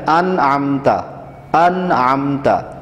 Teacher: اب انعمتا میں نون ساکن کو بالکل واضح پڑھنا ہے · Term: اظہار حلقی